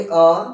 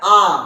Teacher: देखो जो छोटा अ है उसको बोलेंगे अ फिर बड़ा आ आ में मुंह खुलता है ठीक है मुह खोल कर बोलना है आ तो अ और